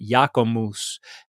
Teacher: there are some places where the B drops out